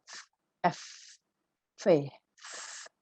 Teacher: Jadi membuat gerakan meniup dengan cara menggigit sedikit bibir bagian bawah. Jadi ini menggigit bibir bagian bawah sambil meniup, gitu artinya.